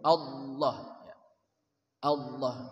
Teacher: Allah lebih tebal dengan memenuhi rongga mulut. Allah namanya taghlidz.